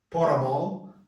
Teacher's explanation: O T entre um R e uma vogal. Ele some.